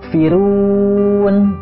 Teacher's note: ru-nya yang asalnya mad tobi'i panjang 2 harokat, tapi karena bertemu dengan nun sukun, itu berubah menjadi mad arid lis sukun. Panjangnya bisa 2, 4, atau 6 harokat.